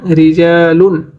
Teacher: র হরফে যখন জের হবে তখন পাতলা করে পড়তে হবে